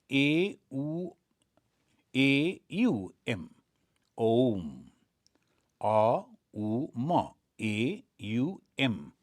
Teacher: The first letter of the A, the very first letter is the root sound, the key, pronounced without touching any part of tongue or palate